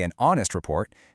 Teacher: That's exactly why we say an honest report, because the H is totally silent, leaving us with a vowel sound